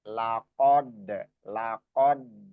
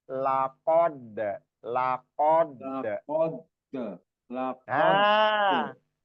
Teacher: Jadi bertemunya ujung lidah dengan apa namanya? Langit-langit depan atas ya.